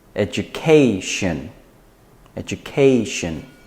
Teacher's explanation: you want to put the stress before the shen, so it's education, education.